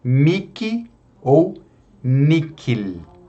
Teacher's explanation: mihi e nihil também nós podemos pronunciar como um K